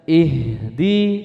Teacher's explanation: Ha itu kan memiliki sifat rokhwah. Rokhwah itu artinya mengalir sempurna.